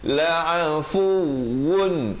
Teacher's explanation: Kemudian innallaha la'afu, tekankan waw ini bersabdu